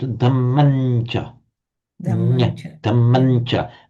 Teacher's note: Because of the influence of the following ch, it's pronounced as a nasal. So you can write it as an M with a dot underneath, but you pronounce it damancha.